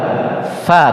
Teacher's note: yang betul adalah Fa tidak merapat Kenapa tidak merapat karena ada gigi yang di atas menyentuh perut bibir